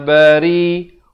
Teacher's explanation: Ri dipanjangkan 4 atau 5 harakat. Di sini masuk beserta dengung 2 harakat.